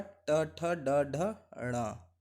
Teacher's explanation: ये आते हैं मूर्धन्य, मूर्धा से बोले जाते हैं